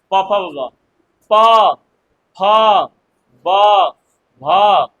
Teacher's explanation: देखिए तो कहाँ सट रहा है? प, ओठ सट रहा है जी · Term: ओष्ठ